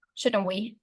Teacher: The nuclear stress is on the word shouldn't, because tag questions are a narrow focus of polarity, and shouldn't is a word that bears the polarity. The tone is falling because the speaker expects the listener to agree with them. · you can stress it on the word shouldn't